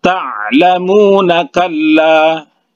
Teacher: Akan tetapi kalau diwasolkan, maka ini berlaku hanya mad tabi'i waw saja. Jadi berlaku hanya 2 harakat saja kalau diwasolkan ke ayat berikutnya.